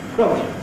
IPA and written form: k.r.ɒ.g.l.i (Krogli)